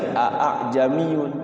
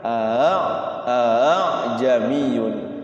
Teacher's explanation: Hamzah yang keduanya itu dibaca ringan tidak boleh dibaca A A jamiyun tapi dibacanya Bagaimana a a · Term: tashil